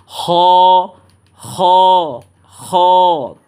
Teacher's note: এই খ হরফটা উচ্চারণ হবে আপনার গলার শেষ শেষ অংশ থেকে এবং মোটা আওয়াজে উচ্চারণ করবেন